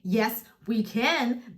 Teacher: if you say yes we can that's a statement M and there you would have a falling intonation